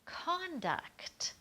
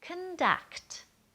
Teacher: make it the action then we're going to say conduct and we're going to stress and really pull out the vowel in the duct part the second part